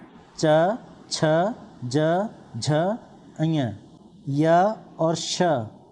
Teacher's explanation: जीवा का अगला भाग या नोक जब कठोर तालु को स्पर्श करती है तो इन ध्वनियों का उच्चारण होता है। ये ध्वनियाँ हैं च, छ, ज, झ, अञ, य और श। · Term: तालव्य ध्वनियाँ